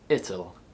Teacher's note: and they'll the only exception is it will which becomes ital with the schwa sound inserted between the two consonants